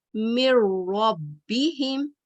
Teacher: जैसे नून बिल्कुल मुकम्मल तौर पर खत्म हो जाएगा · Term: इदगाम में कामिल